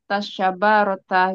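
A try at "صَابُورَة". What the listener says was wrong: Sabu. Sabu. Sin pakai sin bukan sya, bukan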